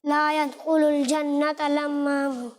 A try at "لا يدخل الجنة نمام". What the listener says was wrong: لا يدخل الجنت نمام. آخر میں نون کی جگہ لام کی آواز آ رہی ہے.